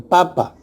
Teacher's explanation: en bilabial se juntan los labios para decir P en papa.